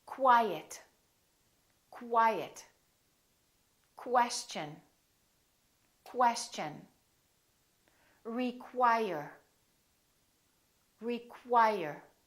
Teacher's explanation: have words that are spelled with Q you they're pronounced as kW so there's a little W sound in here